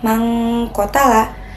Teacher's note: Cara membacanya adalah suara nun mati disamarkan dan didengungkan sekitar dua harakat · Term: ikfa, ikhfa